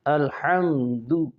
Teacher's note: الحمد کی میم پر اظہار شفوی ہے، یہاں غنہ نہیں کرنا